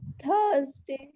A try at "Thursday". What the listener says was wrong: हाँ थर्सडे,